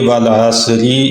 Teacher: اب اگر ہم یہاں پہ ملانا چاہیں گے تو پھر را کے نیچے زیر ہے، اس کو باریک پڑھا جائے گا، اور اگر رکنا چاہیں تو را ساکن ہو جائے گی۔